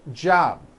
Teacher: For example, in the word job, you may be saying job without a B sound, or the B is so weak you don't even hear it